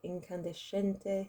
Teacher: where there's an S and a C and an E, it makes a sh sound